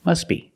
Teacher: When you link the words, must be. Link the sounds s with a b. S, b. Together, must be. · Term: T is silent